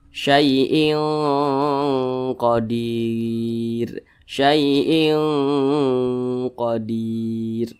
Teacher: suara dengungnya itu lebih dominan daripada suara samarnya. Jadi lebih condong berbunyi eng, nah, tapi disamarkan.